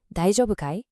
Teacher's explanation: Just remember to use a rising intonation, you know, to make it sound like a question.